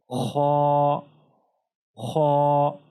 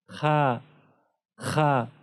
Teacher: اگر یہ سبز حرف نہ ہوتا تو پھر ہم اس کو اس طرح پڑھتے خا، خا، لیکن اس کو خا نہیں پڑھنا ہے، باریک نہیں پڑھنا ہے۔ خا کی یہ صفت ہے کہ اس کو پر پڑھنا ہے، باریک نہیں پڑھنا ہے۔